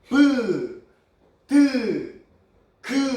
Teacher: 공기가 막혔다가 터지면서 소리가 납니다.